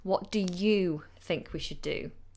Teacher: I don't use the weak form of you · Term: stronger form